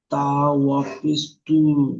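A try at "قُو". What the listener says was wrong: তা নয়, কফ। কফ ওয়াও পেশ কু। কাপ ওয়াও পেশ কু।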